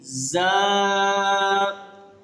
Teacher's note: زا، ابھی دیکھو یہاں پہ اس کو سختی سے پڑھا جائے گا، زا، اس میں سین کی سیٹی کی آواز ہوگی لیکن کم ہوگی۔ زا، اس کو بھی 2 سیکنڈ تک لمبا کر کے پڑھیں گے۔